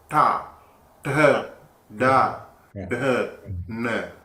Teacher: So tongue will be curled back and flap on the upper pallet when you pronounce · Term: tawag